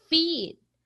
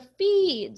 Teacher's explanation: Like a slide whistle, for example, you can slide from high long e sound as in feed. So some may pronounce a feed, so very prolonged.